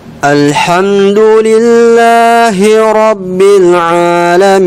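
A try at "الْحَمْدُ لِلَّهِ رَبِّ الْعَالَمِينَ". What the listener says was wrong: Perhatikan dua hurufnya. Nah, alhamdulillah terlalu dalam. Makhrajnya kan dal ini ujung lidah ketemu dengan pangkal dua gigi seri atas. Jangan ke gusinya saja, tapi harus kena ke gigi. Nggak boleh alhamdu terlalu ke dalam. Alhamdu ya agak ke depan. Kemudian Rabbil alaminnya Rabb.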